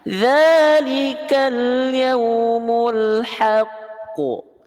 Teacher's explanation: Kita berhenti maka qafnya disukun. Ketika berhenti pada huruf qalqalah yang bertasydid, itu ada hukum qalqalah yang lebih kuat, namanya qalqalah akbar. · Ditekan. Maka tekan dulu baru lempar bunyi qalqalah qafnya.